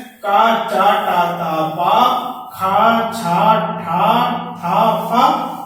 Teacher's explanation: हिंदी वर्णमाला का प्रथम वर्ग और दूसरा वर्ग, हिंदी वर्णमाला का पहला वर्ग तथा दूसरा वर्ग के वर्ण अघोष व्यंजन वर्ण कहलाते हैं।